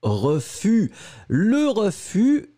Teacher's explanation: le s final on ne prononce pas